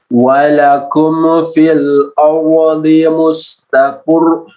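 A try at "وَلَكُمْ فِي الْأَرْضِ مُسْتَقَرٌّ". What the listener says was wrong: untuk huruf mim walakum jangan sampai tawadud, jangan sampai memunculkan qalqalah atau huruf yang huruf ada yang huruf yang muncul. Masih ada tawadud, masih ada muncul seperti qalqalah ya, seperti qalqalah.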